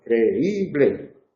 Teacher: Una sílaba pretónica, cre, una sílaba tónica y una sílaba postónica, ble.